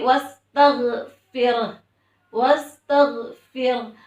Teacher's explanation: RO nya dibaca tipis kalau karena sebelumnya ada huruf yang berharakat kasrah